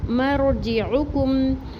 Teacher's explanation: عین کے اوپر پیش اور کاف کی پیش کو میم ساکن سے ملا کے پڑھیں گے ، مرجعکم یہاں میم ساکن پر رکیں گے نہیں، اظہار شفی